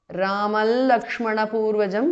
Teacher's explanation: The Anuswara of Ramam changes to the nasal of La.